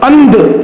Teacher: यहां पर अ और ध के बीच में न की ध्वनि आ रही है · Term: अनुस्वार